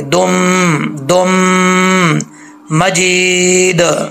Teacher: अब दाल को मीम से कनेक्ट करेंगे, गुना करेंगे